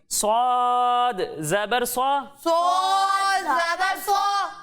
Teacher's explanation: जब हम सौद की अदायगी करेंगे तो इसमें भी सीटी की आवाज आएगी, लेकिन इन दोनों में फर्क इस तरह होगा कि इसे बारीक पढ़ेंगे और इसे मोटा करके पढ़ेंगे।